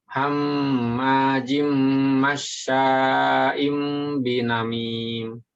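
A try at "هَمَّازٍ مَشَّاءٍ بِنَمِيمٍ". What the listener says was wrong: Perhatikan za-nya. Hammazi. Zi. Lagi za.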